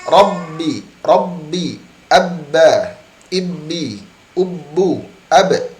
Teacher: huruf ba ini merapatnya dua bibir, tetapi kemudian tidak di ba, ba, ba.